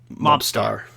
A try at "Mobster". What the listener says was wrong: Yeah, but you pronounce it Mobster. You're not supposed to pronounce the hard R. It's Mobster.